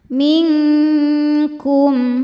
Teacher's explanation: Ilaii minkum ming ada hukum ikhfa hakiki ab'ad ya karena nun sukun bertemu dengan huruf kaf. Cara bacanya bunyi nun disamarkan ke kaf disertai bunyi dengung. Nah ini dengungnya besar ya karena kaf ini makhrajnya jauh dari nun.